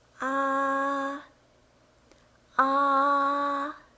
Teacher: First tone, it's high pitched. It's very, very high here.